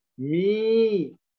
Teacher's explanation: Ya ketika kasroh diikuti ya sukun. Maka dibaca panjang satu ayunan. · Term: al-yaul madiyah